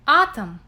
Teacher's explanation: when o is unstressed it sounds more like a